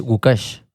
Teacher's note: the accent is in the second syllable